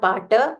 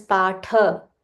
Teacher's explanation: Ta is mahaprana. So it's not pata. It is patha.